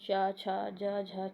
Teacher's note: अब देखो तालव्य व्यंजन के तालव्य व्यंजन होते हैं जिनके उच्चारण में जीभ के पिछले भाग को तालु से संघर्ष करना पड़ता है।